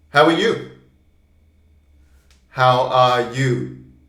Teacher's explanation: And you is the strong word, because that is what's important.